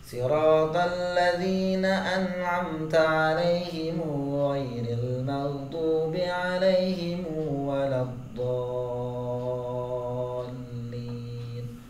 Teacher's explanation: Di riwayat Imam Hamzah itu alaihim nggak ada mim sukun, adanya him itu dipanjangkan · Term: dipanjangkan alaihim